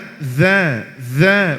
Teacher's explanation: Kalau zal dikeluarkan ujung lidah sedikit. هكذا ذا ولا بد أن نضغط. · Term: huruf zal